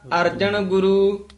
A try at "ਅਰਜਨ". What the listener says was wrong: ਅਰਜਨ ਨਾਣਾ ਥੋੜਾ ਹੈਗਾ, ਨੰਨਾ ਅਰਜਨ ਗੁਰੂ।